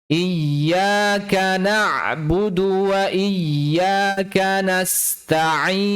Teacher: penekanan pada tasdid, pada huruf ya